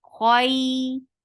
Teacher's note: Kho will be heavy. For fatha, open your jaws, attach with ya, and that will be 2 counts long because this is lean.